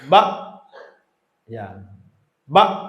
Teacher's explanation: Kalau mati ba langsung putus.